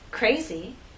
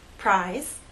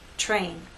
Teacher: R is a voice sound but after these three consonant sounds it begins voiceless and then becomes voiced as we go into the next vowel sound